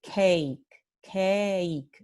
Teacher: Puedo decir que en diptongos, como en la palabra cake, esta E existe en la primera parte de cake